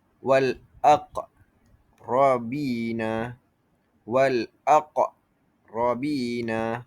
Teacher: qalqalah, hentakan kuat ketika mati